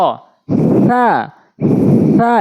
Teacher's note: একদম হালকা করে জিহ্বার আগা দাঁতের আগায়